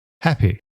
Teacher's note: that final y on so many English words was pronounced (in the conservative received pronunciation accent) exactly the same way as 𐑦. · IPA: /hæpɪ/